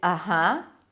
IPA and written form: ʌˈhʌ (Uh-huh)